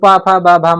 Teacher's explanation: प भ म का उच्चार स्थान ओष्ठ है